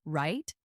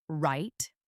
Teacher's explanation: Say the word right with a rising tone as if asking a question. Right? Now say right with a falling firm tone as if you are confirming something. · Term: intonation